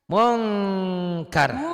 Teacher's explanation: Mungnya ditahan karena ikhfa.